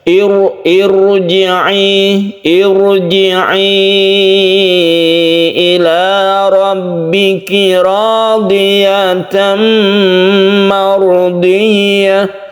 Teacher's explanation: Kalau misalnya di depannya itu adalah hamzah wasol yang berharokat kasroh, meskipun berharokat kasroh dia dibaca tafkhim atau tebal. Jadi membacanya itu roknya itu agak mencucu lidah kita itu, bibir kita ya.